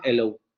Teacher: Ah, no, pues que en la variante estándar se está cayendo, por ejemplo, en Inglaterra, se está cayendo la glotal o está desapareciendo la glotal fricativa sorda al inicio de palabra. Entonces, en Londres dicen hello, ¿no?